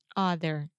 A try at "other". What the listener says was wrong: You're still saying ah. Just like the word mother.